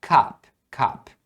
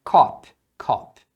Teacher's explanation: é um o bem aberto quase um a né não é um a do jeito que a gente fala